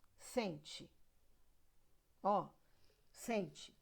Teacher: Você já reparou que o T virou ti? Ele é fraco.